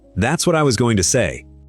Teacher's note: Falling at the end, because it's a statement. And going to is squeezed into almost 1 syllable. And that's a real reduction that the spelling completely hides.